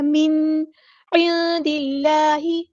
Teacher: نون ساکن کی آواز کو ہم ظاہر کریں گے اور نہ ہی ہلائیں. · عین کو وسطی لیکن تھوڑا سا ادا کریں. نون ساکن کی آواز کو ہم یہاں چھپا دیں گے، اخفا ہو رہا ہے. دال کو ہم نے لام کے ساتھ ملا دینا، حمزۃ الوصل ہمارا ڈراپ ہو جائے گا.